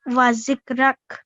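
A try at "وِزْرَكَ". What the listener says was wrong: Wizrak. How wa with kasra under it. There's viz.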